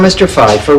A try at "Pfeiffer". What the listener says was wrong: That's P. Pfeiffer. The P is not silent.